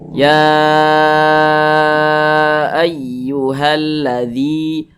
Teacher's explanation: Maka zi dibaca panjang. Mad tabi'i panjangnya 2 harokat. 2 harokat itu untuk lebih mempermudah, kira-kiranya itu 2 ketukan.